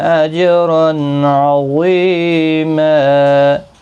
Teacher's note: جیم ساکن پر قلقلہ ہوگا اور تنوین کے بعد حرف حلقی کا عین ہے، اظہار حلقی ہوگا، گنہ نہیں ہوگا · حرف مستعلیہ ہے، پر پڑھا جائے گا، غی یا مدہ بھی ہے، ایک الف کی مقدار کے برابر کھینچیں گے بھی، اور یہاں پر تنوین کو بدل کر ایک زبر کے ساتھ وقف کریں گے، الف مدہ بنے گا، ایک الف کی مقدار کے برابر کھینچ کر وقف کریں گے، ملانے کی صورت میں اخفاء حقیقی ہوگا۔